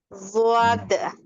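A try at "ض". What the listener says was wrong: नहीं, उसको घुमाओ मत ना, वाव मत लगाओ उसमें। देखो इसकी स्पेलिंग मैंने लिखा यहाँ पे, ये ज़ाद अलिफ जबर ज़ा और फिर दाल पे सुकून है।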